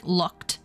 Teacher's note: the D in something like looked the D actually comes out as a T